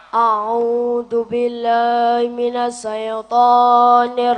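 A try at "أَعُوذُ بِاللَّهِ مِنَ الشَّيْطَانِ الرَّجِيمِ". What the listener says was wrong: A'udzu billahi minasyaitonir rajim. Ojo sae. Shin, ya, sukun, fathah, syai, bukan sae. Syai.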